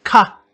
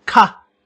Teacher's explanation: And this is high tone and aspirated. That means you add some breath. You can see the difference between these two high tone sounds is an aspiration.